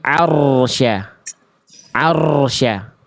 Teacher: Harus tetap jelas ar walaupun dia getarannya gak boleh banyak tapi getarannya tetap harus jelas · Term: ro sukun